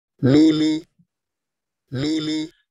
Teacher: Here you have Lulu, the word for pearl, and you see that clearly there is no difference, no obvious difference at least, between the two vowels as far as length or intensity is involved. And when you hear the word as produced by the speaker, you do not have the feeling that one of the vowels is more important as the other